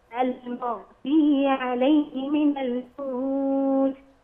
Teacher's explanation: خلي بالك الميم مرققة والغين مفخمة وليست مقلقلة